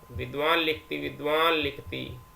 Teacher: न के स्थान पर अनुनासिक ल हो जाता है